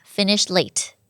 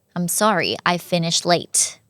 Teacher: ลบเสียงEdหรือว่าเสียงTท้ายfinishได้เลยค่ะ